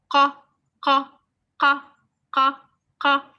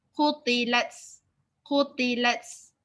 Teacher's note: It's from the throat. The sounds coming from the throat.